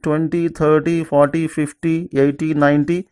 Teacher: Multiples of 10 take stress in the beginning.